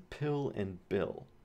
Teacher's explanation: Okay, these are bilabial sounds. So here the airflow is stopped right behind your two front lips, p and b, and then it's released, and that makes the p and b sound. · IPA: [p] [b]